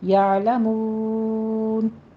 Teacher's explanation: کے اوپر آپ نے جھٹکا نہیں دینا، یا نہیں کہنا، یا آئین وسط حلق میں جا کے سٹاپ کر دیجیے گا